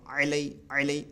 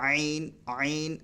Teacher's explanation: اور عین جو ہے یہ حلق سے نکلتا ہے. دیکھیں آپ دیکھ سکتے ہیں میں کیسے نکال رہا ہوں.